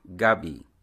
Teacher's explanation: a favorite dessert of Filipinos is a root called Gabi some call it purple yam you say it with a stress on the first syllable